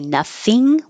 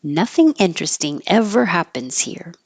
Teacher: You can say nothing with an ing, the back of your tongue going high for ing, or nothing, the front of your tongue coming up for the in